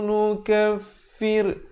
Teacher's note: ra di sini dibacakan dengan nipis